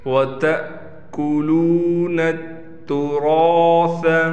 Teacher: را کو پر بھی کریں گے اور را کے بعد الف ہونے کی وجہ سے را کو کھینچ کر پڑھیں گے